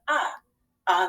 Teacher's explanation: it doesn't have the expected long a sound it says more of an uh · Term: open syllable exception